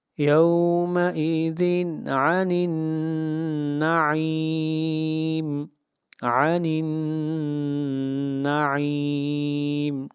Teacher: یہاں پر تنوین کے بعد حروف حلقی میں سے عین آ رہا ہے، اس لیے یہاں پر یومئذ عن، یہاں پر اظہار حلقی ہوگا، اخفاء نہیں ہوگا، یومئذ عن النعیم، عن النعیم، نون کے اوپر آواز ناک میں جائے گی، عن النعیم۔